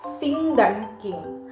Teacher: Hanya bunyi eng yang terdengar tanpa geh di akhir.